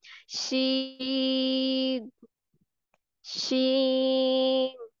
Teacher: जो जुबान का हमारा दरमियान है उसको तालु की तरफ बुलंद करते हुए बारीक और फैलती हुई आवाज में पढ़ेंगे। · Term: शीन